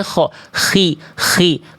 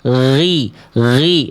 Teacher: Kalau ngalir nafas jadinya kh